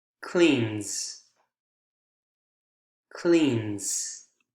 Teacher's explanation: kind of in between s and z but i think more z